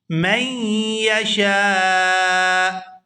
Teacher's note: یہاں میم کو یا مشدد کے ساتھ ملائیں گے